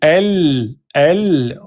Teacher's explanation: comme la langue elle touche le palais, le son il est dévié sur les côtés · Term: lem soukoun